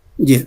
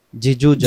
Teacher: জিম অক্ষরে জিহ্বার মাঝখান থেকে শক্ত করে পড়তে হয়